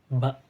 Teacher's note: huruf ba ini mahrajnya yaitu syafawi atau berasal dari bibir gitu. Ba itu kan dari bibir sepenuhnya. · Kemudian thariqatu khurujil hawanya atau cara udara keluarnya yaitu infijari, letupan gitu, sama seperti hamzah. Nah kemudian dari wad'ul awtari sautiyahnya, dari keadaan pita suaranya yaitu majhur gitu, atau ada tekanan gitu, atau bisa disebut juga jahar gitu.